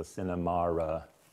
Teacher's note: she has what we call intrusive r between cinema and so cinemara, which is common in England